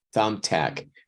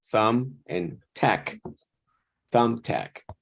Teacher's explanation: So, But a thumbtack when you is have like- the two together, then the first word sounds a little bit more tonically higher